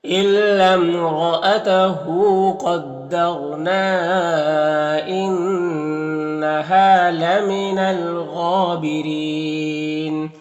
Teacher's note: قاف حروف مستعلیہ میں سے پر پڑھیں گے، یہاں پر را ساکن سے پہلے دال کے اوپر زبر ہے تو را کو پر پڑھیں گے · یہاں پر الف لام حروف قمری غین کو شروع میں تو لام کو پڑھیں گے، الف کو نہیں پڑھیں گے۔ غین حروف مستعلیہ میں سے پر پڑھیں گے، کھڑا زبر ہے، ایک الف کے برابر کھینچیں گے، را کے نیچے زیر، را کو باریک پڑھیں گے، اور یہاں پر یا مدہ ہے اور وقف کریں گے تو مد عارض وقفی ہوگا، تو اس طرح سے پڑھیں گے۔